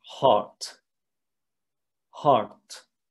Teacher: the north they would say something like heart but i just i just dragged the ah to be a little bit longer and to drop a little bit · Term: southern german pronunciation